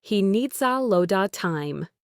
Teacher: and lot of becomes loda.